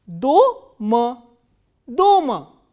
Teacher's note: The only difference between these 2 words are the position of stressed vowel. In the first word, the vowel O is stressed.